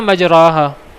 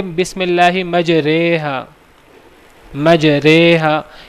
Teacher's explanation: اس را کو ہم نے جھکا کر پڑھنا ہے امالہ کر کے